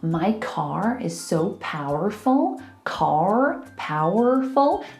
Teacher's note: a rhotic accent pronounces all of the R's